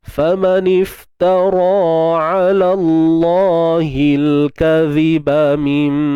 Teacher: Huruf zal, makhraj, keluar sikit hujung lidah.